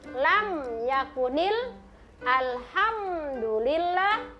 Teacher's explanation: Tidak boleh kasih dengung-dengung itu mim sukun. · Kenapa dibilang izhar syafawi? Karena huruf itu keluar dari kedua bibir.